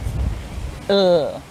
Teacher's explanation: your mouth is open and your tongue touches the gums above and behind your top teeth. Ul. It's a voiced sound, so the sound comes from your throat. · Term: ul sound